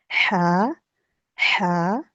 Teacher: ہا کی آواز درمیان حلق سے رگڑ کھا کے نکلتی ہے، ہا، ہا اور ہا، یہ ہائے کی ہا کی طرح کی ہوتی ہے، ٹھیک ہے۔